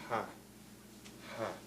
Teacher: there is an H sound, which is soft, it's not hard, the air can come out freely through it.